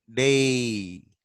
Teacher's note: We start from A and we end at E